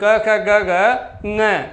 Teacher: तो क का उच्चारण स्थान क्या है? कंठ।